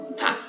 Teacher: ta ini di ujung lidah dengan gigi seri atas